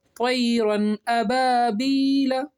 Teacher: नाक में हम आवाज़ छुपा कर नहीं पढ़ेंगे, बल्कि कैसे पढ़ेंगे, ज़ाहिर करके पढ़ेंगे नून की आवाज़ को। ठीक है, जैसे यानी बिला गुन्ना के जल्दी पढ़ेंगे, इसको हम इज़हार कहते हैं।